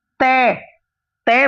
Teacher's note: तय में आपकी जीभ दांत पर लग रही है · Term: दंत्य